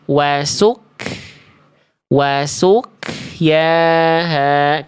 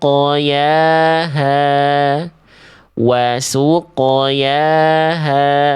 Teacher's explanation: Bunyi qof dipantulkan, tetapi tidak ada embusan napas yang dikeluarkan. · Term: sukun qof